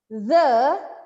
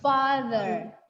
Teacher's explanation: Tapi kalau kita bilang the itu ada enggak nempel. Jadi ada udara yang mengalir di antara lidah dan gigi. Tapi posisinya sama gini.